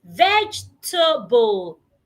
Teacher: A lot of people pronounce the word as vegetable, having four syllables. However, the word has just three syllables. Why? Because the E after the G is silent.